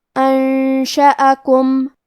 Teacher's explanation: شین حروف الاخفاء میں سے ہے اور اخفاء کا معنی ہے چھپا دینا، تو ہم نون کو چھپاتے ہوئے اور غنہ کے ساتھ یہ حکم کو ادا کریں گے